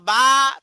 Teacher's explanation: মুখের খালি জায়গা হতে মাদের হরফ পড়া হয়